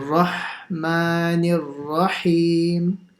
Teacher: try and pronounce the ha as well on the Bismillah, not making it sound like a kh.